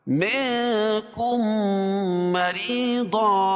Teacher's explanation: منکم، یہاں بھی اخفاء حقیقی کیونکہ نون ساکن کے بعد حروف اخفاء کے 15 حرفوں میں سے کاف ہے، اور میم ساکن کے بعد میم آئے تو ادغام شفوی ہوتا ہے، اس میں غنہ ہوگا، پہلے حرف کو مدغم اور دوسرے حرف کو مدغم فی، اور مخرج اور صفات کے لحاظ سے یہاں ادغام مثلین ہوگا، ٹھیک ہے، کیونکہ دونوں ایک ہی حرف ہے۔